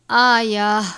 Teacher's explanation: وقف مطلق کی صورت میں اس تا کو گول والی ہاں میں بدل کر پڑھیں گے، یعنی آیا، تا کو ہا سے تبدیل کر دیں گے.